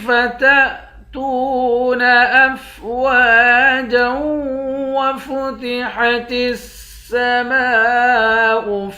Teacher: جیم کے اوپر دو زبر ہے، دو زبر کی تنوین میں جب وقف کرتے ہیں ایک زبر بن جاتا ہے۔ جیم کو واو کے ساتھ ملا کر پڑھیں گے تو یہاں ادغام ہوگا